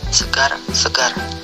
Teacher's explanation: Konsonan R, kriteria bunyi apikoalveolar getar bersuara